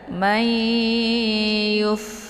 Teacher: Jadi cara bacanya itu didengungkan. Dimasukkan nunnya ke dalam huruf ya atau dileburkan suara nun ke dalam ya dengan cara didengung. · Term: idgham bi gunnah